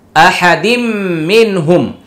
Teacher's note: তানউইনের পরে মিম আসছে ইদগামি বাগুন্না